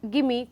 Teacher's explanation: give and me, there are two separate chunks, but they are clubbed together when a human speaks, and that becomes a little tricky for the child to find out what that gimme, G-I-M-M-E, which sounds like gimme, could actually be sorry, G-I-M-M-I, which is actually give me. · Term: chunking